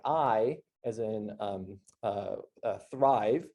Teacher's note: I sort of starts low and moves somewhere to the higher frontal portion of the vowel space